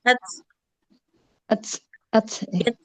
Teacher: jadi ada percik nafasnya ya, jangan lupa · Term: hams